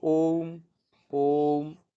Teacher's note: प्लुत, जिनमें तिगना समय लगे।